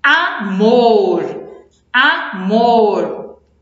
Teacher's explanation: O mor é o mais forte e a última sílaba. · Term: oxítona